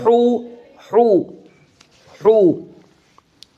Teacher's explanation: حلق سے، حلق کے درمیان سے ہا ادا ہوتی ہے۔